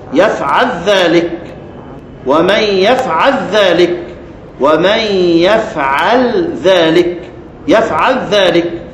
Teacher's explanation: بإدغام لام يفعل في الذال